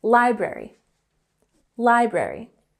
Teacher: we have the emphasis on the first syllable